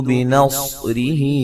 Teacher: स्वाद को मोटा अदा करेंगे और रा को बारीक पढ़ेंगे